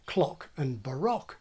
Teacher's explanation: General American simply lacks the historic short O sound that survives in my kind of accent